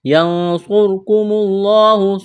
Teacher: صاد اور را کو مڈا کرنا ہے